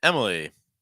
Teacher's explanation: Heavy stress on that first syllable.